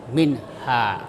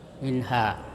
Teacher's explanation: nunnya itu harus terang dan pendek, tidak boleh panjang. Minha. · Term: izhar halqi